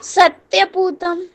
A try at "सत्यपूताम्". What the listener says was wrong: पूतम नहीं, पूताम, पूताम क्योंकि आप पुल्लिंग है, सत्य सत्य पूताम।